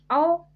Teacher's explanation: औ संयुक्त स्वर है जो छोटा अ प्लस ओ के मेल से मिलकर बना है